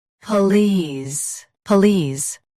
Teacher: Stress lease. Keep p soft and quick.